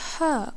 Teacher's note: The letter ha comes from the middle of the throat. It is a breathy sound with stronger airflow. Think of it like warm air coming from deeper in the throat without using your voice heavily.